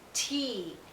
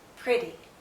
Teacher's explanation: here we have the e sound and it's not followed by any consonant sound so it's nice and long